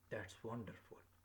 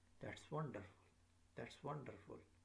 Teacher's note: you can feel my voice is falling down. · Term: falling intonation